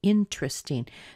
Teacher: So in the word interesting, we don't hear that E, and we do hear a strong in. That's where our stress is, in. And then we get truss with a little schwa, because this is an unstressed syllable.